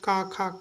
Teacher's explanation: का वर्ग जितना भी है कंठ से बोला जाता है